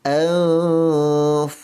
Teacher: nun mati bertemu fa, ikhfa dengung dengan kadar 2 harakat menurut kaedah ikhfa.